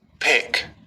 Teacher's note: यहाँ पहले क्या हुआ कि लिप बंद हो गए, हवा रुक गई, फिर ओपन लिप रिलीज एयर, फिर खुली और झटके से हवा निकली। · हमारे गले में कोई कंपन नहीं होगा।